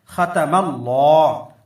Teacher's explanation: لام سے پہلے زبر ہے، اللہ کے لام کو ہم موٹا پڑھیں گے